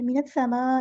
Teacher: سین کی سیٹی واضح ہونی چاہیے ، من السماء نہیں، من السماء، حمزہ کی آواز کو واضح